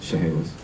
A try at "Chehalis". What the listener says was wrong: But there's no second H. Just, you say Chehalis.